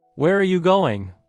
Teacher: Voice goes down on going, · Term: falling inonation, falling intonation